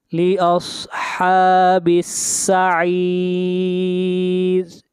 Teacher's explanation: با کو ملائیں گے سین کے ساتھ اور اس را کو باریک پڑھا جائے گا